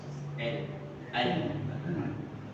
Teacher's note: Caranya ujung lidah kita diletakkan di belakang gigi seri atas.